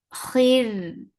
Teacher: Because of this fact, we are giving temporary sukoon here. This temporary sukoon will make ra light, and it will get sifa of tawassut.